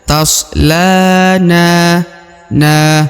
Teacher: huruf na dibaca dua harokat di sini karena di depan huruf alif ya, huruf na terdapat alif ya.